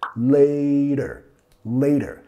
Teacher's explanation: Nota que estamos usando la R suave de español.